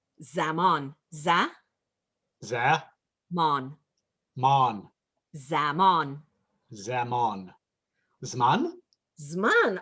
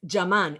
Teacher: it undergoes uh phonological fusion because classical hebrew doesn't have ju so we have z instead of j